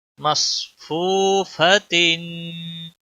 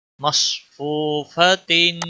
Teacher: मीम स्वाद ज़बर मस, फा वाव पेश फू, फा ज़बर फा, ता दो ज़ेर तीन, मसफूफतिन। वाव मद्दा है, एक अलिफ के बराबर खींचना होगा, स्वाद को मोटा पढ़ना है